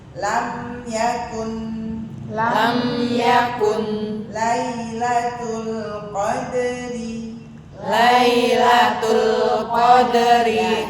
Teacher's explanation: bisa main takarannya juga nih ketemunya yaitu mim sukun sama nun sukun sama takarannya. Jadi lam sukun, mim sukun, nun sukun itu sama takarannya ya.